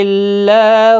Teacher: اللہ کا لام زیر کی وجہ سے باریک پڑھا جائے گا